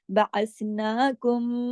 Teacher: नून को हमने 2 हरकत खींचा